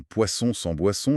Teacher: l'important c'est de laisser l'air passer aussi par le nez. H un peu comme quand on freedonne, sentir cette petite vibration dans le nez. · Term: le son nasal